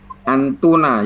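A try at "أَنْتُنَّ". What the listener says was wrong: Pakai tasdid Pak, antunna.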